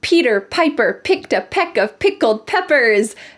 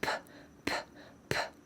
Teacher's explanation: Notice at the beginning of each of these words there is a puff of air.